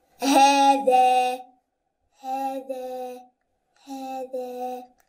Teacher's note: both of them are going to be stretched twice because the first one is standing fatha